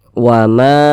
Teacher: wama Ma dibaca panjang ini namanya Mad Jaiz munfasil